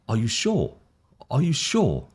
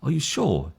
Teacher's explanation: We have a rising sound, and when we have a rising sound, it becomes more of a questioning or an uncertainty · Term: rising intonation